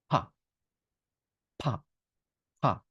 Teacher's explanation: ধাক্কা দিয়ে পি উচ্চারণ করবেন বাতাস সহ যার বাতাস বেশি তার পি সাউন্ড বেশি